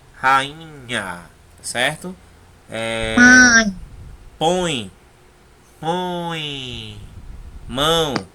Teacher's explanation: aquele ditongo em que o som sai totalmente pelo nariz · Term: ditongo nasal